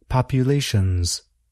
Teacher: We make the word plural by adding an S to the end of the word. But why do we spell the word with an S, but produce a sound that is more like Z